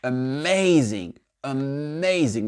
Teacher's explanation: vous voyez l'accent tonique, il est sur le MA